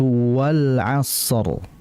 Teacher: huruf waw ini merupakan huruf yang keluar di dua bibir, atau dalam hukum makhrajnya adalah asy-syafatan.